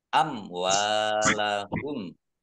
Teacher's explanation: mim sukun bertemu dengan huruf wawu, bacaan idhar safawi, dibaca jelas. Wawu fathah alif mat tobi'i, panjang 2 harokat.